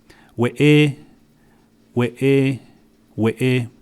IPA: weʔeː4